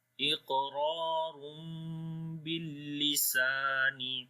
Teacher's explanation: On the iq there is a qalqala, and also we did this qaf in heavy sound. After that ra is also in heavy.